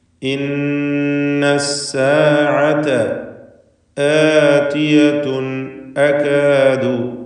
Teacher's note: ആതിയതുൻ എന്ന് പറയുമ്പോൾ ഹംസയുടെ ദീർഘം 2 ഹറക്കത്തിൻ്റെ അളവിൽ മാത്രമാണ്. എന്നാലും ആ ദീർഘത്തിൻ്റെ പേര് മദ്ദുൽ ബദൽ എന്നാണ്.